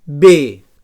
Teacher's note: So bilabial oclusiu sonor.